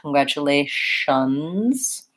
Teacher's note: this word we have a Z sound at the end congratulations this tion sounds like an SH